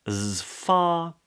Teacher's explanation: the lower lip comes up for the F, voiceless, far, tongue drops, not R, as far.